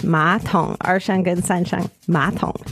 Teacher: it's third tone and third tone but when pronounced the Third third tone becomes second tone